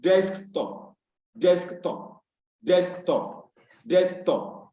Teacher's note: the stress is placed on the first syllable of a dysyllabic noun · a desktop now has its stress on the first syllable, desk.